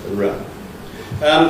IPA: ɹ